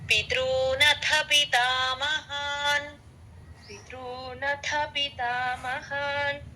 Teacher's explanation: పితృ తేలిగ్గా చెప్పాలి పితృ అని అలా స్ట్రెస్ రాకూడదు